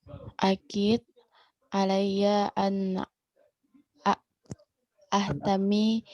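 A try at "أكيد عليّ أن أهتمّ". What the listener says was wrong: Enggak, ahtam. Perhatikan dulu harakat. Coba perhatikan dulu harakatnya ya. Ya sudah ketemu kalau ana di baris fathah terakhirnya. Fathah ya. Sama harakatnya nanti sebelumnya. Ahtamma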